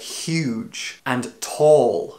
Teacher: these words describe bigness and the vowels in those words are created further at the back of your mouth